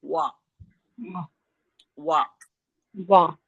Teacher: दोनों होठों के अधूरे मिलने से वाव अदा होता है। ठीक है? दोनों होठ गोल हो जाते हैं और मिलते नहीं है। · दोनों होठ गोल हो जाते हैं और मिलते नहीं है। अधूरे मिलने से दोनों होठों के अधूरे मिलने से।